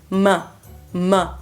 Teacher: o M, que é um som bilabial, então os lábios se encontram